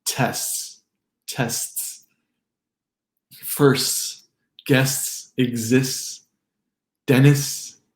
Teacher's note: STS. You'll have a hard time hearing the T in words like tests, tests, firsts, guests, exists, dentists.